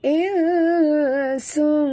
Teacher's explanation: Dia bertemu dengan huruf sin, adalah ya, ikhfa hakiki ya. Kita sorokkan bunyi nun ke dalam sin disertai dengung ya. Dia bukan baca insun, bukan macam itu ya.